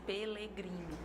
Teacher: ele passa de vibrante para lateral Então vai ser Pelegrino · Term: disseminação